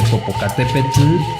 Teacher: tienes que poner la lengua como si la fueras a pronunciar de forma normal pero quita el sonido de la l y sólo deja pasar aire